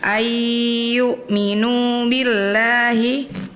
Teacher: yang harusnya dibaca minunya panjang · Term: mad